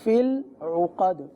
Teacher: عین کو ہم نے حمزہ بنا دیا، تو عین کی ادائیگی وسط حلق سے ادا ہوگی